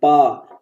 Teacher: पा में देखो ओठ टच हो रहे हैं, पा, तो पा वर्ग ओठ से होता है।